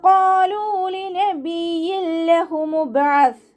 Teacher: ഖാഫ് ഇസ്തിഅലാൻ്റെ ലെറ്ററാണ്. നാവിൻ്റെ ബേക്ക് മുകളിലേക്ക് പൊക്കിയിട്ട് തഫ്ഹീം ചെയ്യുക. ലാമിൻ്റെ കൂടെ വൗമദ് വന്നു.